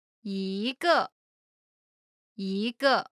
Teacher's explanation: When 一 is followed by a fourth tone. It changes from the first tone to the second tone.